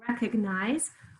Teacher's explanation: very clear e in the first syllable very clear long i in the third syllable